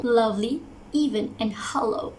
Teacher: i pronounce the stress really clear in the first syllable